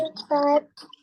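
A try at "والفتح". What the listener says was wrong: jadi seperti tadi udah benar walfat, cuman ditambahin lagi sedikit walfat. Jadi ketika berhenti di ayat pertama itu huruf H kecilnya jangan lupa, jangan ketinggalan. Harus dibaca dengan cara dialirin napasnya.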